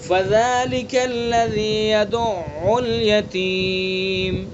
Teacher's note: فَذَلِكَ الَّذِي يَدُعُّ الْيَتِيمَ، نرمی سے پڑھیں گے، ذال کا مخرج زبان کا کنارہ اور زبان کی نوک اور ثناء علیہ کا کنارہ۔ یدعو، عین کو توجہ سے پڑھیں گے، یدعو حلق سے نکالیں گے، حلق کے بیچ سے، ٹھیک ہے۔